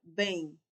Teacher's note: como se fosse assim, um e com o tio e o i no final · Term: semivogal